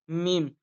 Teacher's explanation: মিম, দুই ঠোঁটের যে খুস্ক অর্থাৎ শুকনো জায়গাটা আছে ওই জায়গাটাতে মিলে হয় মিম